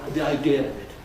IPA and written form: ði aɪˋdɪə əv ɪt (the idea of it)